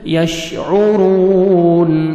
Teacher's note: عین کو بھی اپنے صحیح مخرج سے ادا کرنا ہے تاکہ حمزہ میں ساؤنڈ مکس نہ ہو ، را کو مر پیش ہے، را کو موٹا